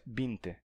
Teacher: eles passaram a pronunciar o V como B